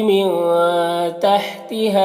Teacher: نون کی آواز کو ناک میں چھپا کر ایک الف کی مقدار کھینچ کر پڑھیں گے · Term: اخفا